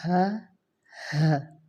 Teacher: یعنی کہ حلق کا جو آخری حصہ ہے نا، وہاں سے یہ 2 حروف ادا ہوں گے، ہا اور حمزہ